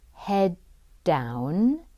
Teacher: one of the T sounds becomes elided or left out